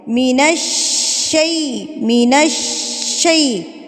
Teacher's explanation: شین کے اوپر تشدید، تو آپ نے اس کو مضبوطی سے، شین کا لفظ مضبوطی سے ادا کرتے ہیں